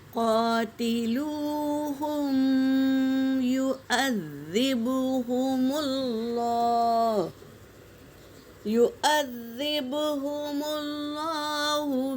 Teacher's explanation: با کے اوپر سکون ہے تو یہاں قلقلہ ہوگا